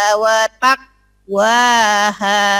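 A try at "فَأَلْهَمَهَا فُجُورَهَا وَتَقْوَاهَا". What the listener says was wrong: Nah, tinggal ngeluarin kolkolahnya watak. Fa'alhamaha fujuraha wa taqwaha. Kolkolahnya belum keluar ya.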